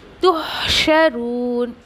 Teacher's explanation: अब कुछ लोग इसको तुहशरून पढ़ते, तुहशरून, तो इट्स नॉट ए तो, इट्स ए तू